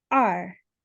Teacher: And then the second sound, two, is R, and that is a fourth tone, so you go down